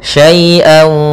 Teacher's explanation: Caranya adalah kita masukkan langsung tanwinnya ke waw dan kita tahan gunnahnya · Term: idgham bi gunnah